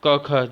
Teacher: जिह्वा मूल क ख, जिह्वा मूल, ये माने कि जिह्वा का जो मूल है वहाँ से इनको बोला जाता है